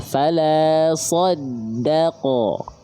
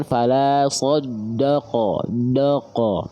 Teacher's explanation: jangan sampai huruf dalnya terkontaminasi oleh huruf tebal karena huruf dalnya adalah huruf yang tipis karakter pelafalannya